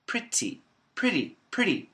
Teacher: a flap T pretty pretty pretty pretty and they call it a flap because it's like a flap the tongue flaps on the roof of the mouth the alveolar Ridge